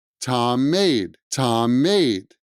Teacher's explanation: There's two M's together, and those are going to blend to one sound.